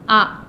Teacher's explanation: حمزہ سینے کی طرف حلق کے نیچے کے حصے سے آتا ہے